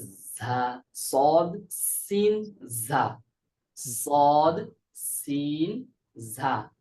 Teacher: সদ সিন ঝা এর মাখরাজ হচ্ছে জিহ্বার অগ্রভাগ সামনের ওপরের দুই দাঁতের আগা এবং নিচের দাঁতের সাথে সামান্য যুক্ত হবে।